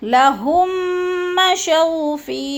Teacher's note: میم ساکن کے بعد میم مشدد آ گئی ہے تو ادھر ہم نے ادغام کرنا ہے، سختی سے جمع کے پڑھنا ہے، جمع کے۔ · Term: ادغام شفوی